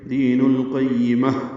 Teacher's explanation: دین القیمہ یا کو جلدی پڑھنا ہے، میم کو تا مربوطہ سے ملانا ہے، ہا پہ ہمس ہوگا اور اس پہ وقف کریں گے. دین القیمہ ہا میں تبدیل ہو جائے گی.